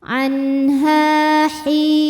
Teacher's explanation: Anha, ha hukum tajwidnya adalah mad tabi'i zahiri, sebab ada alif yang sebelumnya berharokat fathah. Cara bacanya, ha dipanjangkan dua harokat.